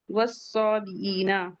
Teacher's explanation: सौद हुरूफ मुस्तालिया से है, हैवी पढ़ेंगे